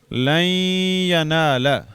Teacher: نون جو ہے یہ اس میں مدغم ہو گیا یا میں، تو اس کی وجہ سے اس پر شد آئے گی، اور اس کی عربی چھاپے میں یہ جزم جو ہے سکون کی علامت ختم کر دیتے ہیں۔ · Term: ادغام